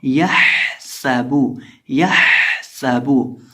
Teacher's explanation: ये जो हा है इसको हम बीच हलक से हलक के दरमियान से अदा करेंगे। इसकी आवाज़ आएगी यह सबू, यह सबू। · सीन के अंदर हम सीटी पैदा करके पढ़ेंगे